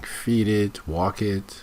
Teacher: Notice the intonation here, the rising intonation, because she's listing.